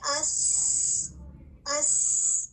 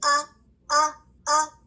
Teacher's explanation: حمزہ کی ادائیگی کے دوران ہوا نکلتی ہوئی محسوس نہیں ہوتی، کیونکہ ووکل کورڈ بند ہو جاتا ہے۔ ہوا کا رک جانا آواز میں بلندی کا سبب بنتا ہے، اس لیے حمزہ کی آواز جو ہے لاؤڈ ہے، اور اس کو ہم جو اس کا نام ہے آواز میں بلندی کو جہر بھی کہہ سکتے ہیں۔